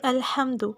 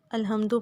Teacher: ہا جو ہے وسط حلق سے ادا ہوتا ہے